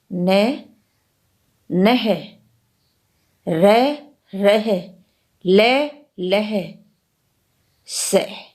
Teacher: ऊपर के दांतों से थोड़ा ऊपर मसूड़ों के साथ जीभ के स्पर्श से ये व्यंजन बोले जाते हैं। संस्कृत में न, ल एवं स का उच्चारण स्थान दंते था, किंतु हिंदी में इनका उच्चारण स्थान दांतों से ऊपर वर्ष स्थान से है। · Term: वर्ष्य व्यंजन